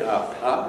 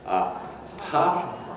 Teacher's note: you can probably feel there's a little explosion of sound · you can probably feel quite easily a little puff of air that comes out as you release this in the form of a minor explosion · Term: plosive